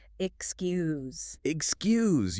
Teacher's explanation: The letters X and C create a tough consonant cluster. You have to move from a K sound to an S sound.